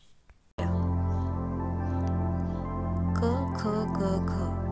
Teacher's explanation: क ख ग घ यांना कंठव्य म्हणतात कारण यांचा उच्चार करताना ध्वनी कंठातून निघतो